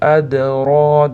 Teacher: Adroka da de da qalqala kelyapti. Adro deb qalqalasini beramiz.